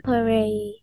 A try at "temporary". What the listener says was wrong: Yeah, temporary.